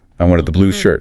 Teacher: If I stress blue, I wanted the blue shirt. I'm correcting you